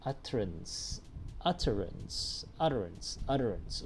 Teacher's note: there's an alveolar tap in that sound